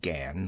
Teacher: She pronounced it Gan with only a suspicion of a nasal sound